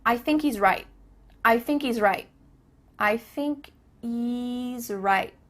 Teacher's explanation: There's no H happening here. I thinky. Thinky.